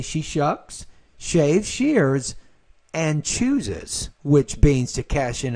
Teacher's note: Your intonation rises on all items except the last, at which point it drops.